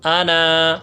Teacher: تو انا میں بھی یہ جب روانگی بیچ کلام میں آ جائے تو یہ کھینچا نہیں جاتا. جب اس پر وقف کیا جائے تو یہ ایک الف کے بقدر کھینچ کر پڑھا جاتا ہے. جیسے حمزہ زبر آ، نون زبر نا، انا، وقفاً انا.